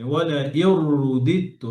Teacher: রতে পেশ আছে এখানে, ওয়ালা ইউরুদিত্তু, র মোটা হবে